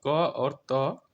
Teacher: अघोष अल्प प्राण ध्वनि क और त है